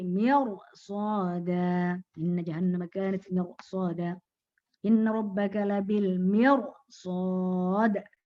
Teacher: Mirsada dibaca tebal ya, karena ketemu ro mati sebelumnya kasroh tapi ketemu dengan huruf isti'la ya, huruf isti'la ya yang tidak berharokat kasroh ya.